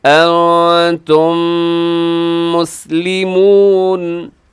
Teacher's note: یہاں میم ساکن کے بعد میم ہے تو یہاں ادغام شفیع ہوگا، یہاں بھی آپ کیا کریں گے، آواز کو ناک میں لے جائیں گے